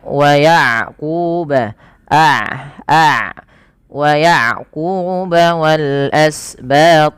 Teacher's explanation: ketika melafalkan ain tidak terlalu dialirkan dan tidak terlalu ditahan. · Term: sifat bainiyah